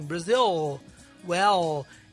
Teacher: O L em inglês, a língua vai lá para cima e ela encosta atrás dos dentes.